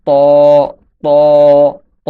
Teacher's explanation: ত হরফটি জিহ্বার আগা, সামনের উপরের দুই দাঁতের গোড়ার সঙ্গে লাগিয়ে উচ্চারিত হয়। জিহ্বার আগা যখন সামনের উপরের দুই দাঁতের গোড়ার সঙ্গে লাগবে তখন ত, ত, ত হরফটি উচ্চারিত হবে।